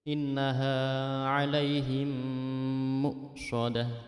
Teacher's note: Jadi mim mati dimasukkan ke huruf mim hidup. Jadi seolah-olah mim yang kedua itu bertasydid dan langsung masuk ke mim yang kedua yang hidup. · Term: idgham mimi